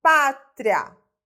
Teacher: A palavra pátria é uma paroxítona, né? A sílaba tônica está no pá.